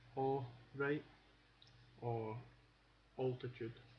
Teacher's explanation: AL. At the beginning of a word is basically pronounced O.